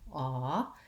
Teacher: It has a rounded shape and it's a little bit more open and tense. So this one's relaxed and central. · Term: ah vowel